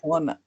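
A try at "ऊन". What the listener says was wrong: Na una, not ona. Pada una. A and u becomes o. Ao o. So pada una.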